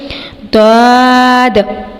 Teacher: منہ کو موٹے کی ادائیگی سے مراد ہے کہ منہ بھرا بھرا محسوس ہو اور زبان پیچھے سے ایلیویٹ ہو، یعنی تالو کی طرف اٹھے، داد۔ اور اس حرف کو ہم نے اوپر والی داڑھوں کی جڑ سے ادا کرنا ہے، زبان کی کروٹ سے شروع کر کے، داد داد داد۔